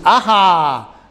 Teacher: Como cuando dices ajá, no dices a, dices ajá, ¿no? A-H-A. Entonces ahí decimos que se aspira. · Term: aspirada